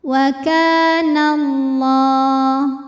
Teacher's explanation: Cara membacanya dipanjangkan lamnya 2 harokat. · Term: mad tabi'i muqaddar